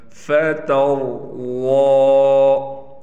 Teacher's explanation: ضاد پر کڑا زبر ہونے کی وجہ سے ضاد کو 1 الف کے برابر کھینچ کر پڑھیں گے۔